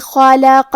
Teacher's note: کلمت خلق میں حرف الخاء کی ادائیگی حلق کے اوپر والی حصے سے ہے. خاء حروف التفخیم میں سے بھی ہے تو ہم یہ حرف کو بھاری آواز میں پڑھیں گے. · خاء حروف التفخیم میں سے بھی ہے تو ہم یہ حرف کو بھاری آواز میں پڑھیں گے. کیونکہ خاء پہ اور لام پہ اور قاف پہ تینوں پہ زبر ہے تو ہم یہ تینوں زبر کو برابر سے ادا کریں گے.